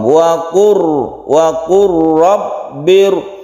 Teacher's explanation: Karena ini berdampingan sifatnya. Kemudian kalau diidghamkan maka suara lam menjadi hilang, tapi tulisannya tetap. Lamnya melebur ke ro karena ini idgham.